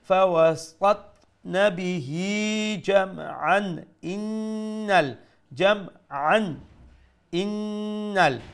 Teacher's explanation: we'll pronounce this tanween if you continue with izhar with clarity